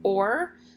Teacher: it's called a murmur diphthong or an r controlled vowel so these blend together to make one sound or it doesn't say ah er it says or